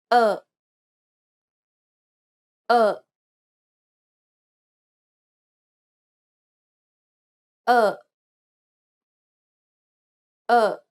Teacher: You can pronounce it by contracting your throat muscles quickly to obstruct the airflow and then releasing the pressure abruptly. Because the vocal cords are held tightly together, this prevents them from vibrating, so you should not hear anything for a short period of time. · This sound or one can argue lack of sound is the abrupt pause that takes place before the next sound is released suddenly. You can pronounce it by contracting your throat muscles quickly to obstruct the airflow and then releasing the pressure abruptly.